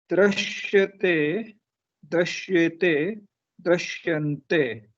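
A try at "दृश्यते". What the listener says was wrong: The pronunciation, nothing, not too incorrect what you said, but I wouldn't go dra because dra sounds like dakara with repamsha. This is rikara, d with rikara. Okay, so drishyante or drishyante.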